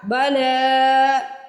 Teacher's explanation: قولوا بلا، اس کو بالا نہیں پڑھنا، بلا لام کے اوپر کھڑی زبر ہے، لام کو کھینچیں گے، با کو نہیں کھینچیں گے۔